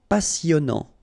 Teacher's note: here you pronounce the double S because you've got a vowel, so it's really a strong one.